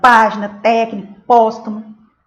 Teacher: Toda palavra proparoxítona é acentuada. É a antepenúltima sílaba, que é a sílaba tônica